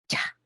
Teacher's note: Primero se cierra y luego hay liberación de aire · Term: africado